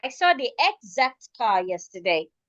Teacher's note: the word exact we are stressing the second syllable. We are stressing the ac.